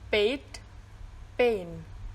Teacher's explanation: the starting point is the same as the a of get and men